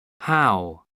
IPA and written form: haʊ (how)